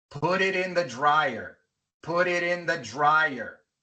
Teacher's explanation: Tenemos dos T's entre vocales y cada una al principio de una sílaba no acentuada. Así que la T al final de put y la T al final de it se pronuncian como R